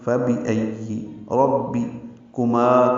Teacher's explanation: پڑھیں گے، ربی ربے نہیں پڑھنا، جیسے فبی ای ربی کما کاف باریک ہے، جلدی اور نرمی سے پڑھیں گے